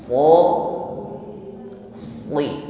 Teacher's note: Jadi ketika mengucapkannya diiringi dengan pangkal lidah yang terangkat, sli, sehingga ketika harokatnya kasrah atau i, dia tetap tebal. Sli, bukan sekedar si, bukan si sebagaimana mengucapkan huruf sin, tetapi lebih berat dan lebih tebal bunyinya. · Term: huruf shad